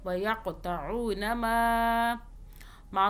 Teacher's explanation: ویقطعون ما کو 3 الف کے برابر کھینچا۔